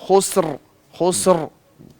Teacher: را کی آواز نہیں آ رہی، آپ ذرا را کو پڑھیں